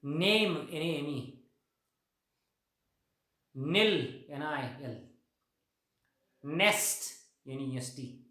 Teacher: न voiced, alveolar, and last level is nasal, कारण नाकातून सुद्धा हवा जाते ना न म्हणताना. नाक बंद ठेवून म्हणजे काय आपल्याला आहे, म्हणजे हा साऊंड प्रोड्यूस करता येत नाही. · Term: नेझल साऊंड